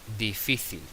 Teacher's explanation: Como cae el golpe de voz en la penúltima y acaba en L, es decir, eh la palabra no acaba ni en n s ni en vocal, pues tilde la i.